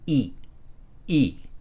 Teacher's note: the pronunciation is like the double e in the word see however it uses a creaky tone you may recall that a creaky tone is a short sound · a creaky tone is a short sound with an abrupt ending on it